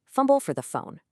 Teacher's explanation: Notice the repeated breathy F sounds. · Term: fricative alliteration